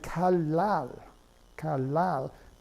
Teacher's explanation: the N ends up being pronounced as an L · The N is pronounced as if it was an L after the other L.